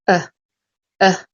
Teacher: tongue is not going forward and the sound is very short so uh so your whole mouth and your tongue all completely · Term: schwa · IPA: ə